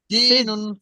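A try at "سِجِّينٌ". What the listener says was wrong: সিজ্জিনুন, আপনার শিন শিন হয়ে যায়, শিন হবে না।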